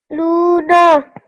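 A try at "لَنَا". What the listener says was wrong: Yeah, good. You made your lam long because of the vowel mud. That's good.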